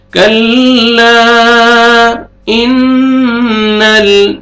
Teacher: नून मुशद्दद है, गुन्ना करेंगे